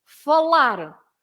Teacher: if you have an r at the end you stress that last part